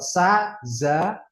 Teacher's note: kalau sa, za, itu yang diucapinnya sama-sama pakai ujung lidah depan